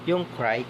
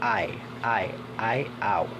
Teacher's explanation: the vowel sound involve a glide or movement from one vowel sound to another within a single syllable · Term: diphthongs